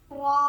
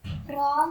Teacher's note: tip of the tongue vibrates, roll.